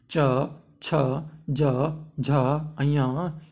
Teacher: तालव्य व्यंजन वे होते हैं जिन्हें बोलने में हमारी जीभ जो है तालु में टच होता है, उसे हम तालव्य व्यंजन कहते हैं।